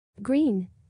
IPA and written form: ɡriːn (Green)